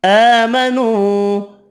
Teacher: آمنوا کھڑی زبر واو مدہ بھی 1 الف کی مقدار میں کھینچ کر پڑھیں گے